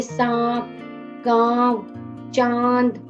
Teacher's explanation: जो अनुनासिक होते हैं इनका उच्चारण मुंह और नाक दोनों से किया जाता है